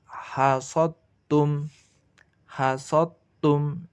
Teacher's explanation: Hasottum, hasottum, daknya dileburkan ke ta.